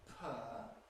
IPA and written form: pʰɜː (peur)